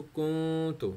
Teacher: साया कुंतु कुंतु कुंतु क्या पढ़ेंगे इसको, कुंतु। नून को पॉज करके नाक से आवाज़ निकालनी है, अपनी इख्फा करना है।